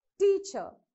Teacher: the first syllable should be stressed more and the second syllable should not be stressed